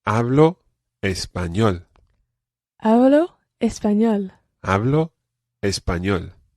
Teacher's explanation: now one thing we've got to watch with this phrase is the pronunciation of the letter b it's not a very plosive be